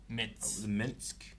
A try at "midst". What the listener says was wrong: No, midst. Midst. It's a D in there.